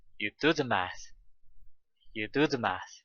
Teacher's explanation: Do and math are the stress words here.